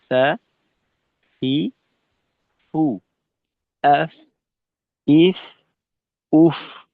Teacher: আর ফায়ে যেহেতু কোনো প্রকার শক্তিশালী সিফত নেই, এজন্য এটা একেবারেই হালকা ভাবে লাগাবো। সামনের উপরের দুই দাঁতকে নিচের ঠোঁটের পেটের সঙ্গে হালকা ভাবে লাগাবো, কোনো প্রকার চাপ প্রয়োগ করব না, বল প্রয়োগ করব না। শিথিলতার সাথে ফায়ের উচ্চারণটা হবে সা, ফি, ফু, আফ, ইফ, উফ, এভাবে।